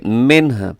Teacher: یہاں رموز اوقاف میں سے جیم ہے، جیم کا مطلب ہے وقف جائز، تو یہاں پہ کیا کریں گے آپ وقف کر سکتے ہیں، منہ، منہ ایسے وقف کریں گے، منہ کہ آخر میں ہا کی آواز بھی وہ آئے۔ آپ کو سنانے کے لیے میں نے ذرا تھوڑا سا زیادہ ہا کی آواز نکال دی ہے، تو اس سے تھوڑا سا کم بھی اگر آپ نے کر دی تو گزارا چل جائے گا۔